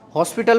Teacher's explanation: हॉस्पिटल बोलते हो, हॉस्पिटल बोलते हो, तो होंठों का जो आकार है वो क्या हो जाता है? गोल बन रहा है। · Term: वृत्ताकार